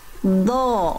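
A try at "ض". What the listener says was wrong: Yang ini beda bunyinya sama yang tadi. Pangkal lidahnya jangan lupa diangkat Bunda. Pangkal lidahnya diangkat karena huruf dot huruf yang tebal. Jadi makrotnya seperti tadi, pangkal lidahnya diangkat.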